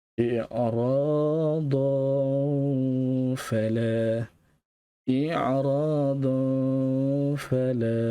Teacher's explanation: Kita kena baca dengan dengung. I'radan dan fala. 2 harakat. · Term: ikhfa hakiki